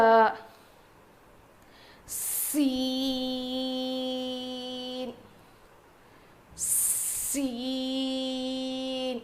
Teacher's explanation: اس میں سیٹی کی سی آواز ہوتی ہے اور ہم تھوڑا اس کو اسٹریچ کریں گے، کھینچیں گے. سین کا مخرج کیا ہے کہ زبان کی نوک کو نیچے کے 2 دانتوں کے جڑ میں لگانے سے ادا ہوتا ہے.